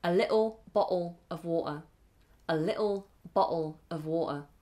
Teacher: That's not the way we do things. Could you pronounce a little bottle of water with a glottal T